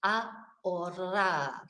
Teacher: it's got the H there, which of course we don't pronounce, and then the double R, which, you know, is a bit hit and miss for most British people, because we're not, you know, taught how to roll our R's from children like the Spanish are.